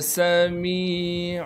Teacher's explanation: میم کے بعد یا مدہ ہونے کی وجہ سے میم کو ایک الف کے مقدار کھینچنا ہے۔